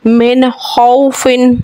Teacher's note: वाव लीन को बग़ैर खींचे बग़ैर झटका दिए नरमी से पढ़ते हैं।